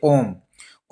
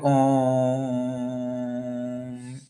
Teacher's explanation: इसमें दीर्घ से भी अधिक समय लगता है उसको हम लोग प्लुत स्वर कहते हैं